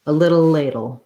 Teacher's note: And then I just have first syllable stress, tense A, lay, ladle. Make sure you use a diphthong for that A. It's gliding between two sounds.